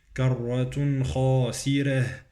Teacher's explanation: قالوا تلك إذا كرة خاسرة، إذا عندي غنة في التنوين، كرة خاسرة، الراء مرققة في كلمة خاسرة